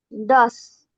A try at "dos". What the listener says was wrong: Pues se escucha más la S.